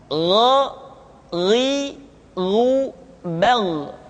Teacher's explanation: selanjutnya adalah huruf g diucapkan seperti kita mengucapkan huruf Kha yaitu diucapkan dari pangkal tenggorokan kita · keduanya memiliki persamaan yaitu itu memiliki sifat al-isti'la sehingga kedua huruf tersebut ketika diucapkan suara kita mesti terdengar menebal